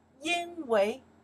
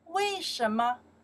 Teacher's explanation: we can pronounce second tones for because, 因为, or we can pronounce the four tones